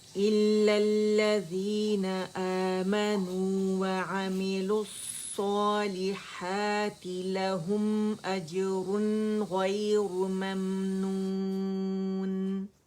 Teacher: اور یہاں پہ ہم نے کیا کرنا ہے، اجرن کے بعد آپ دیکھیں تھروٹ لیٹر آ رہا ہے تو نون کلیئر پڑھیں گے